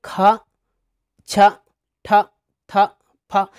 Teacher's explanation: इनका जब उच्चार करते हैं दोस्तों तो ह का जैसी ध्वनि निकलती है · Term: महाप्राण